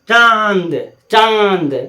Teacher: या अनुस्वार वाला जितना शब्द होगा, जैसे पंचम का गन, नाक में विब्रेशन होगा। या चंद्र बिंदु वाला चांद, चांद, नाक में विब्रेशन होगा